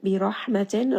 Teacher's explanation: Ha is going to have hams from the middle of the throat.